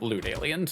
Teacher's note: I'm, you know, North American, so I replace all my T's and D's with a glottal stop.